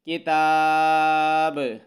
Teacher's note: با پر کلکلا ہے یعنی آواز کو ہلانا ہے